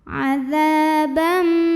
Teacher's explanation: ada tanwin fathah ketemu dengan huruf mim, maka tanwinnya masuk ke mim, adzabam, dan bunyi m-nya tahan dengung. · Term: idgham bi gunnah